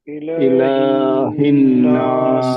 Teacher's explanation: الہ میں بہت لمبا والا مد نہیں ہے، چھوٹا مد ہے. الہ الناس، اس کو بہت لمبا الہ نہیں کرنا.